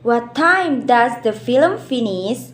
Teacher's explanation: how the voice falls on the final stress syllable of a phras or a group of Words Falling intonation is